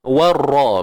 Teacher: warra kita panjang 2 harakat dan jangan lupa ra baris atas kena tebal. Kat sini dia tebal sebab baris atas tuan-puan.